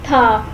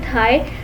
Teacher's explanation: It is a fricative, so the air flows out with friction. Tha is unvoiced and there is no vibration in the vocal cords.